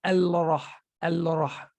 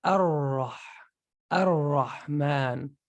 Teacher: ra, when you say ra, what happens to your tongue? Ra, it automatically touches the palate on top.